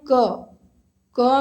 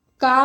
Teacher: क में थोड़ा सा समय लगा, का में ज़्यादा समय लगा, तो ये जो है जो समय लग रहा है इनको बोलने में, इसी उच्चारण अवधि को ही मात्रा बोलेंगे।